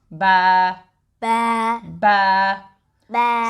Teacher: So ba comes from the moist part of the lips.